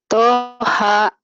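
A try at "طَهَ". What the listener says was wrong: Toha. Bagus.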